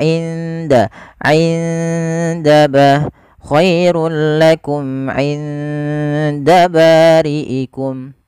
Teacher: Nun sukun ketemu dengan huruf dal itu harus disamarkan kepada makhraj daripada huruf dal. Dal hurufnya, makhrajnya adalah ujung lidah kita bertemu dengan pangkal antara gigi seri atas dan gusi atas, sehingga dia di belakang keduanya. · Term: ikhfa